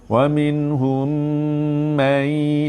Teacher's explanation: Dengung lagi, tapi ni dengung pemalu. Mai, masukkan hidung dan tahan di hidung 2 harakat, bersedia nak masuk huruf ya kan. Mai, masuk hidung.